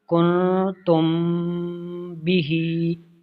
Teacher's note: اخفائے شفوی مطلب غنہ کریں گے